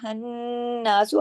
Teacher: یہ جو نون پہ تشدید ہے اس کی وجہ سے یہاں غنہ ہوگا، ہناسو آواز کو ناک میں چھپایا جائے گا۔ پھر یہ ہے کہ اکمل غنہ ہوگا۔